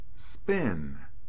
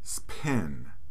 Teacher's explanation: whenever the p sound comes after the sound s, we use the unaspirated allophone, not the aspirated allophone.